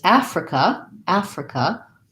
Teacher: africa first syllable stress and this has the black cat vowel